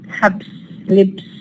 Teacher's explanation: have the change from voiced ba to voiceless fa